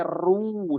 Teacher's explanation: Jadi bukan row, tapi ru sempurna monyong